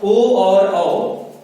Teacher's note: इनको हम कंठ और ओष्ठ, इनके सहयोग से उच्चारित करते हैं